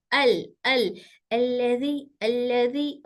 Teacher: लाम बिल्कुल हल्का पढ़े जाने वाला लेटर है, इसको जोर देकर नहीं पढ़ेंगे